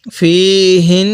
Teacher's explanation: ফীহিন্না, এই হা উচ্চারণের সময় মুখে হালকা আওয়াজ করব। ফীহিন্না, নাকের বাসি দ্বারা গুণনা করব, কারণ মিমে নুনে তাজদিদ গুণনা করা ওয়াজিব। নুনের উপর তাজদিদ এবং মিমের উপর তাজদিদ থাকলে সেখানে গুণনা করা ওয়াজিব হয়ে যায়।